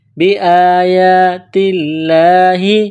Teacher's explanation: کے برابر کھینچنا ہے، تا کو لام کے ساتھ ملائیں گے، لفظ اللہ کے نام سے پہلے زبر ہے تو لفظ اللہ کے نام کو باریک پڑھنا ہے